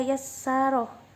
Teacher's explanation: Hukum tajwid di atas adalah huruf ro dibaca tafhim sebab berharokat fathah